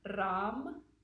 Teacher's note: is going to be Ram, with a rolled R, Ram. The next one, the heart chakra syllable, is Yam.